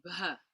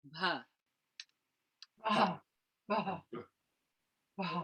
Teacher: you want to make the H aspirated. So bh. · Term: mahapranic